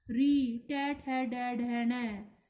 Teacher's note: री, टे, ठे, डै, ढै, नै, ये सब इन्हें बोलते समय आपने देखा होगा कि जीभ हम जो है एकदम पलट कर पीछे आती है, अर्थात हमारी मूर्धा को टच करती है, तो ये मूर्धस्य या मूर्धन्य व्यंजन कहलाते हैं।